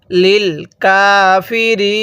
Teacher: এখন এই গোল চিহ্নটার নাম হলো ওয়াকফ। যদি ওয়াকফ করি তাহলে নুনের উপর জবরকে বাদ দিয়ে এই শব্দটির মধ্যে 3 আলিফ টান দিব, কারণ মদের হরফের পরের হরফে ওয়াকফ হলে মদের হরফের পরের হরফে ওয়াকফ হলে সেখানে 3 আলিফ টানতে হয়।